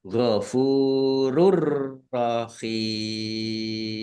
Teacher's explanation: Dumah tanwin bertemu dengan huruf ro. Bacaan idgham bila ghunah. Masuk dengan tidak mendengung. Maksudnya langsung masuk ke huruf ro ya. · Masuk dengan tidak mendengung. Maksudnya langsung masuk ke huruf ro ya. Ditandai rnya ada tasdidnya tetapi tidak mendengung. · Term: idgham bila gunnah